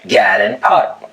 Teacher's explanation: The lot trap vowels are reversed for God and pat to sound like gad and pot